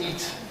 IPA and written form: iːt (eat)